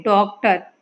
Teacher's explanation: जहां ओ की ध्वनि निकलती है और वो अंग्रेजी शब्द का उच्चारण होता है वहां ये आगत स्वर लगता है